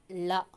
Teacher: பெரிய லா வந்து நாவின் இரு பக்கங்கள் தடித்து மேல் அன்னத்தின் நடுப்பகுதியை தொடணும்